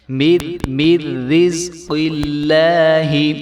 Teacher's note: قاف موٹا ہوگا لفظ اللہ کے لام کو ہم نے موٹا نہیں ہونے دینا